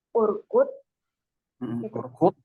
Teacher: ro tafkhim karena ada ro sukun didahului harokat dhamma.